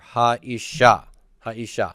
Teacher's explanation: Where's the accent? It's on the ending. It's on the sha part. Ish is so this is tonic over here at the end.